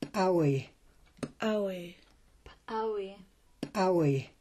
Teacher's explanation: A P with an apostrophe is an ejective P. It's like a P, but the sound is ejected out of the mouth with a strong pop, and it's in the Klallam word flounder.